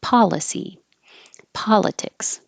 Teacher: police looks like an O but it sounds like an ah